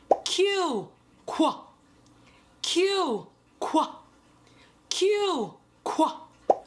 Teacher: There's actually 2 sounds that make the letter Q. The K sound for the letter K and the sound for the letter W. And then you combine those two sounds to make the Q sound.